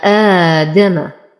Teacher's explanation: لدينا حرف مد وقبله همز فهو بدل للإمام ورش وله 3 أوجه. من يقرأ بالقصر يقرأه حركتين، ومن يقرأ بالتوسط ب4، ومن يقرأ بإتباع البدل ب6 حركات.